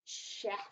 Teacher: that's our CH making a sh sound